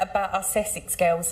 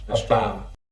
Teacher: using that vocalised dark L on girls, and also that glottal T on about.